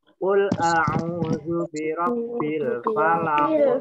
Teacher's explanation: Kalau di akhir kalimat atau ayat itu disebut bacaan kolkola kubro. Bacanya dipantulkan.